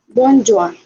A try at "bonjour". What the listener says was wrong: Very good. Actually, that is the exact pronunciation of that word.